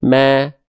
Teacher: Mim ini ketika berharokat fathah nggak dibaca mo kan, tapi dibacanya ma kan, dibaca dengan vokal A kan. Nah, kalau vokal A berarti mim adalah termasuk ke dalam huruf yang tipis.